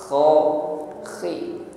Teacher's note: ada gesekan di tenggorokan, ada bunyi dengkur ketika mengucapkan kha